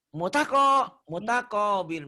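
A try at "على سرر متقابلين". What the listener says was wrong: Bukan mutako. T-nya nggak ada 2, T-nya 1 ya.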